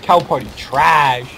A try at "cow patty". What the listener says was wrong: It's Patty, not party. Patty. It's a cow patty, like for your hamburger.